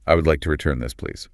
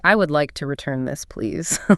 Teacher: You want your voice to stay relatively flat, calm, and steady. And it should drop slightly in pitch at the very end. · You are informing them of a standard retail procedure. Your voice goes slightly down at the end to show that the decision has already been made